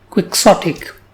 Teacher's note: This word has three syllables, quick, sot, and ic, and the stress is on the second syllable, Quixotic. The word Quixotic is an adjective.